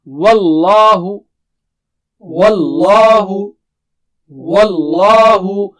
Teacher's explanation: لفظ اللہ کلام موٹا پڑھنا ہے